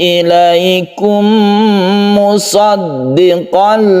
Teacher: mim bertemu dengan mim, idgham mimi kita panjangkan, kita dengungkan karena membentuk tasydid mim.